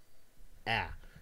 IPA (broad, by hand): æ